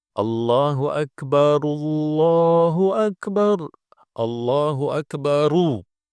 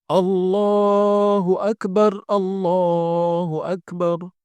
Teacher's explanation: Kalau mau sambung, maka huruf ra-nya harus didomah.